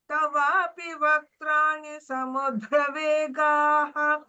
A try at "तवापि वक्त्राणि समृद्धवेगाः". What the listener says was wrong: समृद्ध, not samudra, samruddha. Because the earlier shloka we had samudram, that was different, and this is, if you look at that, samudram. This is samudram. Okay, that was nadis goes to samudram, and this is samruddha.